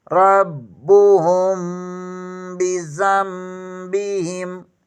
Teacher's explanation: یہاں پر چھوٹی میم بھی لگا دیں گے اور غنہ بھی ہوگا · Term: اقلاب